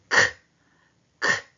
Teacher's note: 거센 소리는 뭐냐? 성대 근육도 긴장되고 숨도 거세게 나옵니다. 자, 얘는 보세요. 크 하는 순간 성대도 긴장하고 숨도 거세게 나오기 때문에 잘못하면 뭐도 나온다?